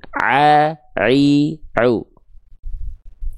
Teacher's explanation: katup epiglotis inilah yang akan menyempit ke arah dinding tenggorokan berkontraksi menghasilkan pelafalan huruf ain